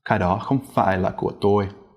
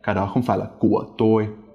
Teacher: If you're using a simple grammatical word, such as của or để, you don't really rise at the end, and you don't really start high either. It's just a low, sharp sort of tone.